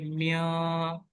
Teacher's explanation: मैं नून साकिन को प्रोड्यूस भी कर रहा हूँ लेकिन उसको छुपाने की भी कोशिश कर रहा हूँ, तो ये आपके पास इख्फा इख्फा है।